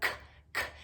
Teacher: the K sound is made in the back of the throat